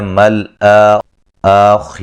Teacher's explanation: جب ہم را کو ملا کے پڑھیں گے تو را موٹی ہوگی، خا بھی موٹی ہوگی